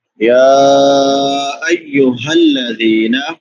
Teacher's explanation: ہا اقصی حلق سے بڑی ہا ہے، حلق کے آخری حصے سے